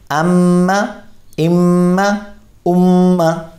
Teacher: ہم نے غنہ کرنا ہے ایک الف کی مقدار میں